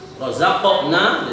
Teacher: sifat qalqalah itu tidak boleh hilang, karena qaf mati itu pasti harus ada mantulnya